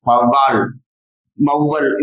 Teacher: ஔகாரம் தனியாக ஒலிக்கும் போது 2 மாத்திரை அளவிலும் மொழிக்கு முதலில் வரும்போது 1/2 மாத்திரை குறைந்து 1.5 மாத்திரை அளவிலும் ஒலிக்கும்.